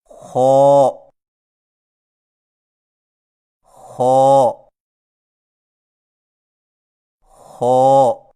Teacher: خا کی ادائیگی میں خرخراہٹ کی آواز پیدا نہ ہو